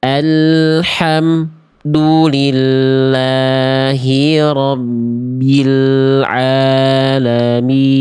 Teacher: mim sukun ketika idhar syafawi memutuskan suara, salah.